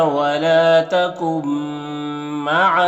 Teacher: نون ساکن کے بعد میم ہے حروف یومن میں سے تو نون کو میم سے ملا کر غنہ کے ساتھ پڑھیں گے، اس کو ادغام ناقص کہتے ہیں.